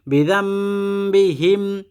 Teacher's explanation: নুন সাকিনের পরে বা এজন্য এই নুনটা মিম হয়ে গেছে